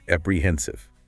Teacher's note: It's smooth, but the emphasis is on the middle syllable. H I I E N A T A as a you want to hit that heen sound.